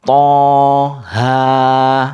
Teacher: Itu harokat berdiri semua, jadi hanya 2 ketukan.